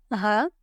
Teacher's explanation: Ha will come out from the lower part of throat.